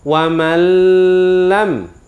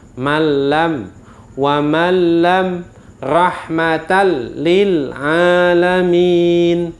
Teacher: Rahmatal, salah, ada dengungnya. Bacanya harus dimasukkan, dalam arti nun dan lam ini itu lebur menjadi 1 huruf tapi tanpa didengungkan. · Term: idgham bila gunnah